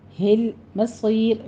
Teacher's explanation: لام کو سٹاپ کر کے آگے صاد کو پر پڑھنا ہے، اور یا مدہ کے بعد آپ نے جب وقف کرنے لگے ہیں تو را بھی باریک ہو جائے گی، مصیر، را موٹی نہیں پڑیں گے، پھر باریک ہو جائے گی، مدارس وقفی کر لیں گے، 6 کاؤنٹ کرنا ہے۔